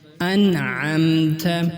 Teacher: مثال کے طور پر انعمت، اس مثال میں نون ساکن کے بعد عین آیا ہے، اس لیے نون کو واضح اور ظاہر کر کے پڑھا ہے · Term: نون ساکن کا اظہار